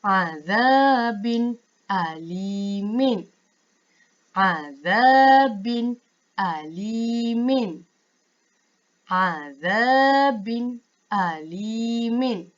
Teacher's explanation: Sepatutnya tidak boleh dengung. Cukup hanya kita membaca secara jelas bunyi bin. Bunyi bin tu kita jelaskan dan bunyi a tu pun kita jelaskan.